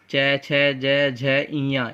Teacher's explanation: number 2 होता है च वर्ग, च, छ, ज, झ, इया, इनका उच्चारण स्थान होता है तालु